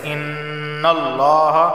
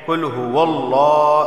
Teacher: اور اگر زبر یا پیش آئے تو لفظ اللہ کو موٹا پڑھا جاتا ہے